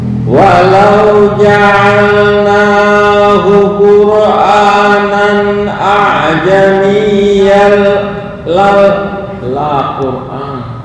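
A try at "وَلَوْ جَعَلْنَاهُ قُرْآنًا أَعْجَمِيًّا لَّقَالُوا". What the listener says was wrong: bukan la Qur'anan, laqalu.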